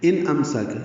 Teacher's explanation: نون ساکن کے بعد حمزہ آنے کی وجہ سے اظہار